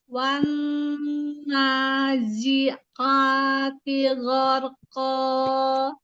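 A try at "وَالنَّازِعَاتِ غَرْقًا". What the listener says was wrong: Bunda ketika zai bertemu ain mengalir aja ya jangan ada ditahan sedikit ya. Wan nazi'a zi'a. Nah, mengalir aja.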